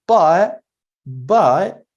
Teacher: many speakers would not pronounce the final T in the word but